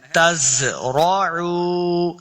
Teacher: زا پہ سختی کے ساتھ پڑھنا ہے ، تزرعو، را کو اوپر پڑھیں گے، تزرعونہ، دیکھیں نون کے